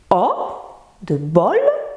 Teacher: Lèvres arrondies, O, de bol, c'est le haut dit ouvert, hein, le son se forme en arrière de la bouche.